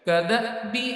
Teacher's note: حمزہ ساکن ہے، جزم والی ہے، حمزہ سکون والی ہے، تو تھوڑا سا چٹکا دے کے پڑھیں گے۔ لوگ اکثر اس کو قدا بھی پڑھ دیتے ہیں، تو یہ غلطی نہیں کرنی۔